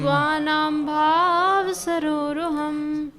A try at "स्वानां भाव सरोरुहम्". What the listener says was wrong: स्वानाम पे खींचना नहीं है, भाव पे खींचना है। स्वानाम भाव सरोरुहम्